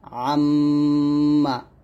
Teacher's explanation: মিমের উপর থাকলে 2 ঠোঁট মিল করে গুন্নাটা আদায় করবেন